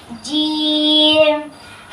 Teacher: زبان کے درمیان اور تالو کے درمیان والے حصے سے ادا ہوتا ہے